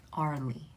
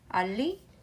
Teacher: there's no R sound in Korean. But you would add another LL to emphasize the L.